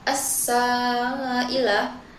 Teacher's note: Pada kata assailah itu terdapat hukum alif lam syamsiah karena alif lam bertemu huruf sin. Cara membacanya huruf lam tidak dibaca dan langsung masuk ke huruf sin. Pada bagian sa itu terdapat hukum mad badal yang dibaca panjang hingga dua harakat.